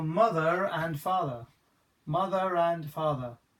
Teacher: Because that R is now followed by that A, the and sound, I'm now going to pronounce the R.